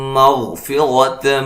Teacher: غین کو موٹا ادا کریں گے، غین ساکن ہے